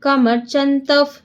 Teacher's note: ಸ್ತುವಂತ ಕಂ ಕಮರ್ಚಂತಫ್ ಯಾಕೆಂದ್ರೆ ತಾದ ಮುಂದೆ ವಿಸರ್ಗ ಇದೆ, ವಿಸರ್ಗದ ಮುಂದೆ ಪಾ ಇರೋದ್ರಿಂದ ನಮಗೆ ಅರ್ಧ ಫ ಆಗುತ್ತೆ